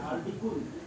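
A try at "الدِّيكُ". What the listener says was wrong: Jangan kun lagi. Adiku.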